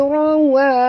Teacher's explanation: ra tebal, ra tafkhim kerana baris atas, wa jangan tebal, wa adalah huruf istifal ya.